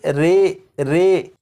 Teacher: یہاں پر لکھا ہے امالہ، زبر کو زیر کی طرف اور الف کو یا کی طرف مائل کر کے پڑھنے کو امالہ کہتے ہیں۔ امالہ کی راء کو اردو کے لفظ قطرے کی راء کی طرح پڑھیں گے، یعنی ری نہیں بلکہ رے پڑھیں گے